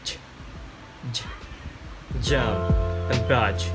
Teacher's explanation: Air is blocked with tongue just beyond the alveolar ridge. Post alveolars gain, then release a fricative.